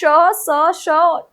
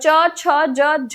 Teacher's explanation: श स ष इन तीनों के उच्चारण में और च छ ज झ के उच्चारण में आपके मुख में वैसा ही घर्षण हो रहा है वैसा ही रगड़ खा रही है वायु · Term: स्पर्श संघर्षी व्यंजन